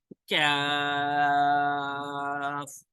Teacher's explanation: قاف کے مخرج سے ذرا نیچے منہ کی جانب زبان کی جڑ کے قریب سے اس کے مخالف اوپر سخت تالو سے لگے تو حرف نکلتا ہے. زبان کی جڑ کے مقابل جو ہے اوپر سخت تالو جو ہے وہاں سے یہ ادا ہوتا ہے.